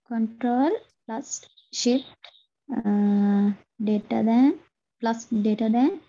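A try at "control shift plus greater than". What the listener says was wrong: ඕයි හරි pronunciation පොඩි upset එකක් තියෙනවා ඒක අපි හදමු control shift plus එක ඇවිල්ලා greater than ඔයා later than වගේ නමක් කිව්වේ කමක් නැහැ එහෙම කියවෙන්න ඕනේ එතකොට අපිට හදා ගන්න පුළුවන්.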